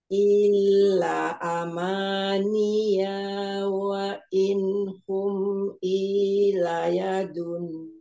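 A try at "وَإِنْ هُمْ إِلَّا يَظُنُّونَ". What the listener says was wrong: Wa inhum illa, lamnya ada tasdidnya Umi, didabelkan. Wa inhum illa.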